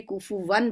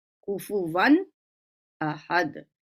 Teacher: कुफुवन जो है वो नून तनवीन है, इसलिए हम उसे जाहिर करके कुफुवन पढ़ेंगे। कुफुवन, वन में नून को जाहिर कर किया हमने, नून क्लियर पर सुनाई दे रहा है आपको।